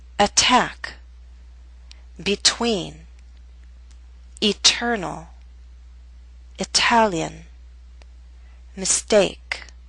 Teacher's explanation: we have a true T in the middle of a word at the beginning of a stressed syllable.